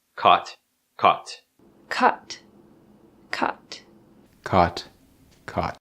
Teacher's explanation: they don't make distinctions between words like lot and thought